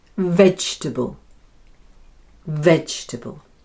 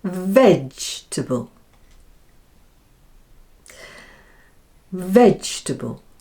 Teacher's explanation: There are 3 syllables and the first one, veg, is stressed.